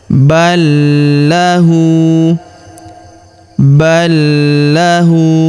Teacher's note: lam sukunnya masuk melebur ke huruf la atau lam yang berharokat tasydid. Kita tahan dan kita tekan ya.